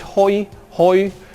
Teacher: where the offset is rounded but could also be treated as unrounded